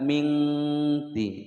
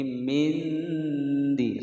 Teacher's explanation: suara nun sukun masih terdengar. Mindiya panjang 2 ketukan.